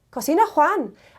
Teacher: So to form a question, the first way of doing it is by switching the verb and the subject and adding that little bit of rising intonation at the end